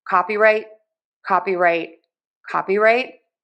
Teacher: And then our other syllables are getting less stress. Our secondary stress, the second most stressed syllable is going to be the right syllable.